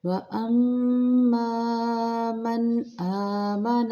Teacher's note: وَأَمَّا میم مشدد پہ غنہ کریں گے، میم زبر الف ماں مقدار پوری کریں گے، من اظہار کریں گے کیونکہ آگے حمزہ حروف حلقی ہے